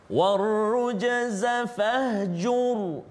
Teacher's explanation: Warrujaza fahjur, tebal pula. Tafkhim pula ra tu bunyi. Kenapa? Kerana sebelum huruf ra yang sukun ada huruf jim yang berbaris dhammah bagi depan.